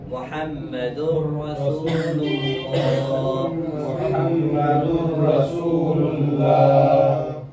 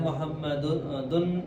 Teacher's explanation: تنوین کے بعد را رہا تو یہاں پر ادغام ہوا ہے لیکن بلا غنہ، یعنی وداؤٹ غنہ، غنہ نہیں کرنا